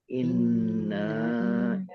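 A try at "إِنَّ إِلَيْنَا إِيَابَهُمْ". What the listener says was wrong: Pendek naknya. Naknya nggak boleh panjang. Yang ditahan N-nya, tapi naknya pendek.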